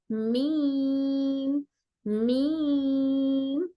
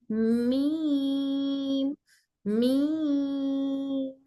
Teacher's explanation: लेकिन बा में हम थोड़ा सा मजबूती के साथ होंठों को बंद कर रहे थे, तो मीम में मजबूती से बंद नहीं करेंगे, बल्कि हल्के, दोनों होंठ एक दूसरे से लाइटली टच होते हैं और नाक से भी आवाज निकलती है। जब मीम पढ़ते हैं तो यह नाक में भी गुन्ना होता है।